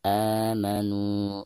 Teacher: Ketika kita membaca a di sini, huruf tersebut dipanjangkan sebanyak dua harakat. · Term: mad badal